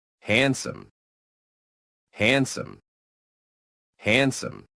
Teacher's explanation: No strong D sound, just soft and sneaky.